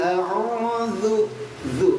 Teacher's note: Kalau enggak digigit jadi zai, zu. Apalagi sampai dikempit bibirnya jadi ju. Qul a'udzu, zu tipisin lagi.